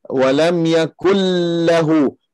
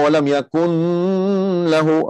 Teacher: Di sini kita tak perlu kita dengung di sini, sebab dia di sini nun mati jumpa dengan lam daripada huruf idgham bila gunnah.